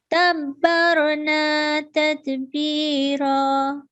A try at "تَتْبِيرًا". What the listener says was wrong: Good, mashallah, but this ta is not letter of jerk or jerking letter. Other ta is like this is letter of jerking letter, but we should not pronounce ta as a jerking letter.